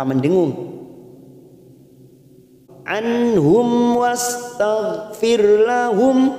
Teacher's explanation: mim sukun bertemu wa namanya Idhar syafawi kita baca jelas tanpa mendengung